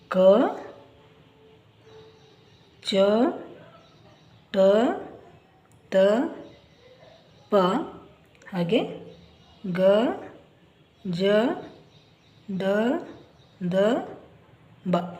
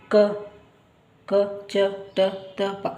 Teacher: ಟ ಪ ಹಾಗೆ ಗ ಜ ದ ದ ಬ ಇವು ಅಲ್ಪಪ್ರಾಣ ಅಕ್ಷರಗಳು ಇದನ್ನ ಕಡಿಮೆ ಉಸಿರಿನಿಂದ ನಾವು ಉಚ್ಚಾರ ಮಾಡುತ್ತೇವೆ